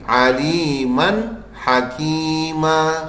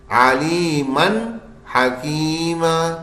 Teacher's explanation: بس نون سادہ سادہ بالکل صاف پڑھ دینا ہے, غنہ ہونے نہیں دینا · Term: اظہار